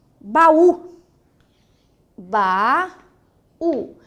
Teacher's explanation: nós temos a segunda vogal do hiato, é um U, ele é forte e ele está sozinho na sílaba.